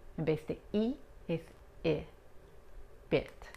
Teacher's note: Más relajada y no ensanchamos los labios tanto como cuando pronunciamos la I en español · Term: La I corta